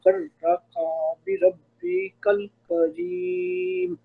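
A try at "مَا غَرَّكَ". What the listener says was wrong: ایک تو وہ نون کا جو گنا ہے وہ تھوڑا صحیح کر دیں، اور دوسرا جو ہے نا ما غرہ کا کاف کو لمبا نہیں کریں. ہاں غرہ کا نہیں پڑھنا، غرہ کا، کیونکہ ایک حرکت ہے نا.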